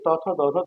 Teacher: তারপরে যে ত থ দ ধ দন্তান্ন দন্ত আমাদের জিহ্বাটা উপর পাটির দাঁতের গোড়ার সাথে স্পর্শ করে এটা উচ্চারণ হয়